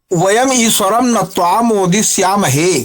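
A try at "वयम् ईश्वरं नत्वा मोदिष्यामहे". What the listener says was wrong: उत्तमम्,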